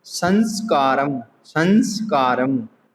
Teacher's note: जैसे अनुस्वार का उदाहरण देखिए, संस्कारम, संस्कारम। जब संस्कारम बोलने के लिए हमें यह अनुस्वार की ध्वनि निकालनी हो तो हमें नासिका की सहायता लेनी ही पड़ती है।